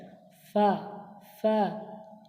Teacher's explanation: নিচের ঠোঁটের ভিজে অংশ এবং সামনের উপরে দুই দাঁতের আগার সাথে লাগিয়ে উচ্চারিত হয় ফা ফা।